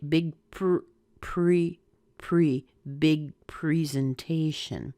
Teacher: as you're making the P your lips get a little bit round